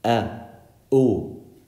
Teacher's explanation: it's the opening and closing of your vocal cords